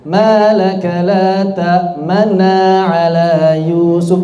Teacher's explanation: Jadi mimnya jangan cepet. Yang cepet hanya nunnya saja.